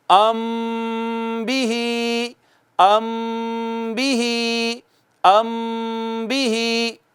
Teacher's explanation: اخفا۔ میم ساکن کے بعد جب با آئے گی تو ایک الف کے برابر آواز کو چھپا کر رکھیں گے اور یوں پڑھیں گے ام بھی، ام بھی، ام بھی۔